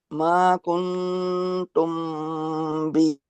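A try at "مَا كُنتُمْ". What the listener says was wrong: अच्छा आप लोग बहुत अच्छा पढ़ने की कोशिश कर रहे हैं, बेहतरीन है,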